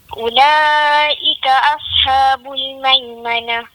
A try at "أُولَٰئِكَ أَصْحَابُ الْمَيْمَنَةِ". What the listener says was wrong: Panjang sikit lagi. Ulaika ashabul maimanah. Bila kita matikan sad tu, dia kembung balik mulut.